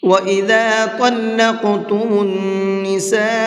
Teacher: وَإِذَا طَلَّقْتُمُ النِّسَاءَ فَبَلَغْنَ أَجَلَهُنَّ فَأَمْسِكُوهُنَّ وَإِذَا طَلَّقْتُمُ النِّسَاءَ، طا کو منہ بھر کے پڑھیں گے اور قاف کو بھی منہ بھر کے پڑھیں گے، اور نون کے اندر غنہ کریں گے، اس لیے کہ نون کے اوپر تشدید ہے